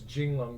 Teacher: Well, neither syllable neither vowel is reduced.